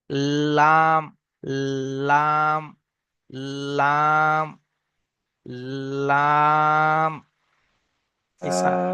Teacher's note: পাশের সামনের উপরে দুই পাশের দাঁতের গড়ার সাথে লাগিয়ে লাম উচ্চারণ হয়